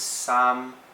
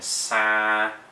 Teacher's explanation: sam, no nasalation, no nose sound, and then sa, which is a lot of that nose sound going on in it.